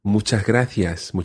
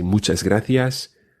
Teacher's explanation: you may hear the s being swallowed a little · a very light s and this also happens with muchas gracias the s before the gratias is swallowed a little